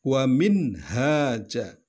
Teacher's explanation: di kata minhaja ada nun mati bertemu dengan huruf ha, yaitu huruf izhar, maka dibaca jelas.